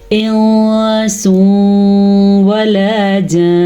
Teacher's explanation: नून साकिन के बाद सीन आया हुआ है, तो नून साकिन की आवाज़ हमने छुपा दी और हमने इसके साथ साथ गुन्ना भी किया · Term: इख्फा का कायदा